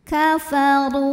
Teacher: ra-nya dibunyikan secara tafkhim karena ra berbaris di atas barisnya dhammah. Cara bacanya adalah ditebalkan, pangkal lidah naikkan.